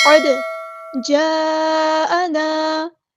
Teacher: مد متصل کنیکٹڈ مد ہے، جاءنا 4 یا 5 کاؤنٹ ہمیں لمبا کرنا ہے، حمزہ کی آواز کو واضح ادا کرنا ہے، الف مد آ گیا تو مد اصلی کرنی ہے۔